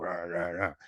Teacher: He also has this condition in his voice that's called vocal fry. He has this vibration in his voice. It sounds like a frog